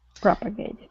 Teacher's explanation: so our stress is at the very beginning